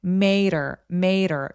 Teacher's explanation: and made her 이렇게 소리를 많이 내게 되는데 여러분 이 made her 할 때 요 D가 her의 H가 약화되면 모음사에 끼어있는 그런 D잖아요. 이런 경우에는 소리가 water, butter 할 때처럼 굴러가는 소리를 내게 됩니다.